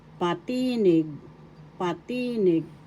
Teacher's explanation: First syllable pa, second syllable ti, third syllable nig. The accent is in the second syllable, pa, tinig.